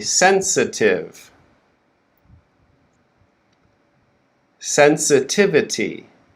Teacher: Notice the syllable with the schwa is very quick, right?